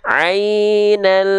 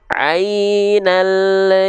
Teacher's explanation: lam sukun itu memantul di ujung pelafalan teman-teman bisa mendapati dia ada keluar bunyi vokal bunyi vokalnya e e tuh kalau di Sunda tuh e nah